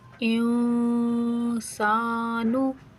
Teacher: नाक में आवाज़ छुपा कर पढ़ेंगे, एक अलिफ के बराबर रुक कर। इंसानु, सा को खींचेंगे, नून को नहीं खींचेंगे